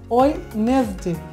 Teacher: বলি আমরা এটাকে বলি কি ওই ওয়েডনেসডে ডিয়ের উচ্চারণটা নিয়ে আসি ডিয়ের উচ্চারণ এলিমিনেট হবে এলিমিনেশন করতে হবে আপনাদেরকে সেক্ষেত্রে এটা হবে ওই নেসডে ডিয়ের উচ্চারণ বাদ দিয়ে ওয়েডনেসডে তারপর